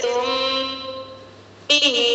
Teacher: यहाँ पर मीम साकिन की आवाज को एक अलिफ की मिकदार नाक में छुपा कर पढ़ेंगे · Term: इक़फा शफ़ी